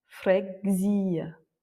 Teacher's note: L'accent tonique est sur le i, fregzia. Ou encore conseguir, conseguir, conseguir.